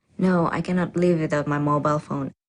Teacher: in response to the first question the answer is definite and this certainty is expressed with a flat or level tone